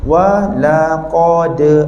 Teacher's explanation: Sebab qalqalah kita tak boleh bunyi putus. Contoh pada saat saya sebut walaqad, dah kurang cantik.